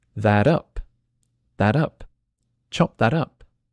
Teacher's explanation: when I say it really quickly the T becomes a d